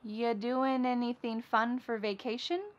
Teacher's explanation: So we're going to start this question with just you, which is reduced to ya.